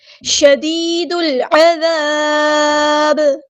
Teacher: پہ دیکھیے یہاں مد آئی ہے تو مد اصلی کریں گے، شدید دال کو ہم نے لام کے ساتھ ملا دینا، حمزۃ الوصل ہمارا ڈراپ ہو جائے گا